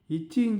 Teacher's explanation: ஆகிய இரு மெய்களும் நாவின் இடைப்பகுதி நடு அன்னத்தின் இடைப்பகுதியை பொருந்துவதால் பிறக்குது